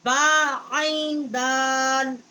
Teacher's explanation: با جو ہے ہونٹوں کی جو تری ہے وہاں سے ادا ہوتی ہے، اور عین جو ہے یہ حروف حلقی ہے، یہ واسط حلق جو ہے وہاں سے یہ ادا ہوتی ہے۔